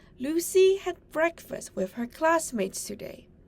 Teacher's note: softer in the sentence Lucy had breakfast with her classmates today the words Lucy breakfast and classmates are stressed the other words are unstressed